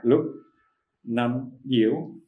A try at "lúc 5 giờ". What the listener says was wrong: Should be down.